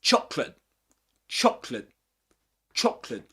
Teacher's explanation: The glottal stop often replaces the T in words like chocolate